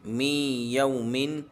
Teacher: واولین کھنچے گا نہیں بلکہ جلدی پڑھیں گے